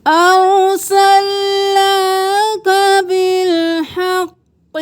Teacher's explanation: نون کے اوپر کھڑی زبر ہے، 1 الف کے برابر کھینچیں